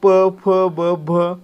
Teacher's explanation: मित्रांनो प चा गट पहा प फ ब भ काय होतं? आपले ओठ एकमेकांना चिकडतात म्हणजे प चा गट आहे तो औष्ठय वर्गातील आहे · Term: औष्ठय वर्ण